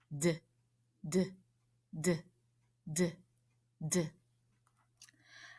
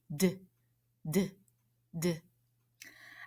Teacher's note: I could feel the front of my tongue tapping up behind my top teeth. D, d, d. I tapped my tongue again and again because I can't stretch this one out. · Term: quick sounds